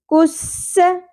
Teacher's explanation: کاف کو باریک پڑھیں گے، سین میں سیٹی کا ایلیمنٹ ہوگا